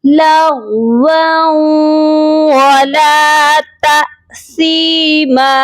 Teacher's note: واؤ کو واؤ مشدد کے ساتھ جب ملائیں گے تو غنہ بھی کریں گے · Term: ادغام مع الغنہ